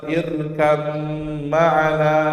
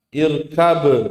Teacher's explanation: ba-nya ketemu langsung mim, langsung masuk ke huruf mimnya